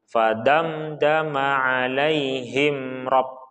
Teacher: Damda mim sukun bertemu dal maka tidak boleh kita tahan.